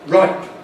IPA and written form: raɪp (ripe)